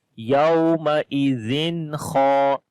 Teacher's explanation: like the clear sound of noon, then kha without gunna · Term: izhar